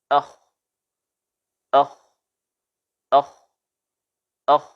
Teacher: udara mengalir begitu saja dengan lancar dari paru-paru, ya, tanpa ada getaran pada kedua pita suara. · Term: al-hamas